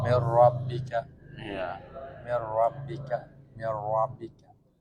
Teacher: Idom bilaguna jangan sampai didengung.